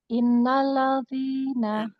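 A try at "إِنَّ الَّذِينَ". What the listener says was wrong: Masih ladzi, ladzi, masih gitu. Pangkal lidahnya masih naik gitu.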